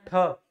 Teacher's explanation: हैं ठ क्या है कि जो है उष्म निकल रही है ऊष्मा निकल रही है गर्म हवा निकल रही है और ज्यादा वेग से निकल रही है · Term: महाप्राण